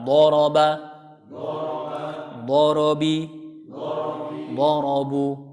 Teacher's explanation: Huruf dhad, huruf ra tebal karena huruf ra fathah di situ. Sedangkan huruf ba-nya tipis, apalagi dia kasrah. Bi, jadi kita benar-benar turun rahangnya, ya.